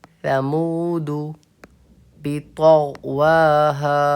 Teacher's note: ثمودو کو بھی ذال ہی کی طرح پڑھیں گے لیکن اس میں سا کا مخرج ظاہر ہونا چاہیے, سین کی آواز نہیں آنی چاہیے. اس کو بھی اس میں بھی اپنی ٹنگ کو اوپر کے دانتوں کے نچلے حصے میں لگا کے پڑھیں گے.